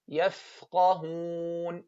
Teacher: the fa the hams of the fa is the strongest hams the hams of the fa is the strongest hams why because there's a gap between the lip and the teeth put your finger and see the air يفقهون okay so we